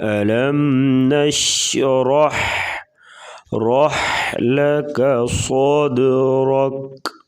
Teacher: ألم نشرح رح لك صدرك، صاد کو پر پڑھیں گے اور دال ساکن ہے تو یہاں پر قلقلہ ہوگا